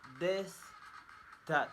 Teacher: Place of articulation, dental or interdental. Manner of articulation, fricative. Voicing, voiced.